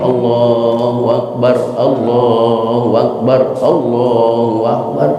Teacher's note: Yang panjang lamnya, Allahu Akbar, baknya pendek.